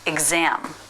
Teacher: So the Z sound starts the stressed syllable